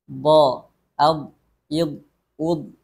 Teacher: tidak ada aliran nafas ketika baik dibaca sukun maupun bertasdid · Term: jahar